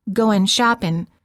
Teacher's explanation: The mistake of saying, goin' shopping, is that the tip of the tongue is touching the area right behind the upper front teeth for the n sound